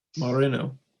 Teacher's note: like a like a instead of a triple or five, however times you roll the R, you just roll it once, so it sounds like a D, a soft D